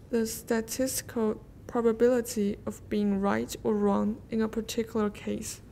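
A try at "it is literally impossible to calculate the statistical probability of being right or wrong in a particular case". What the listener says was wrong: Your reading is really very nice overall, but you rush a bit too much. You're not stopping at the places you need to stop. Phrasing. 就是断句问题。你要开始多留一段句, and then put the continuation right in.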